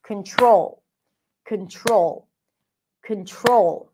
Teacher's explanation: in the word control the primary stress is on the second syllable